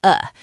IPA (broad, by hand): ə